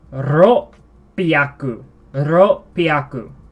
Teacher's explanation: So you say ro, and then with a slight pause, piaku. So that slight pause there is a double up on a consonant character.